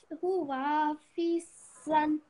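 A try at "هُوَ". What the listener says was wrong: Huwa, can you say this again? This won't be prolonged. It's just 1 second dhamma, 1 second fatha.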